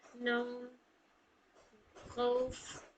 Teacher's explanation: वाव को अदा करते वक्त इसमें थोड़ी होंठ भी गोल होगी आप लोगों की, क्योंकि वाव होठों से अदा होती है।